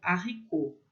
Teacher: Então, haricot é regra, a gente não vai falar som de R com H, o H vai ter som de H, e o T no final vai ser mudo